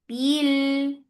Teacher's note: There is no flow of sound on ba. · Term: shidda